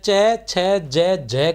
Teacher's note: स्पर्श संघर्षी व्यंजन की हम बात करते हैं तो च वर्ग के बोलने में सांस कुछ घर्षण के साथ निकलती है।